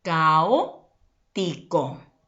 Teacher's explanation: Está en la antepenúltima sílaba la mayor fuerza de voz. Esa es mi sílaba tónica.